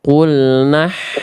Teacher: Ya. Harusnya hak kecil itu karakternya lebih berbisik ya, lebih lembut ya